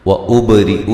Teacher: البا پہ قلقلہ کریں گے، را کو باریک پڑھیں گے